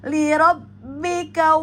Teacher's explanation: hati-hati pada rabbika jangan dipanjangkan karena pada ka tidak ada mad thaobi'i. Maka langsung langsung dibaca pendek ya kawa ya lirabbika ya.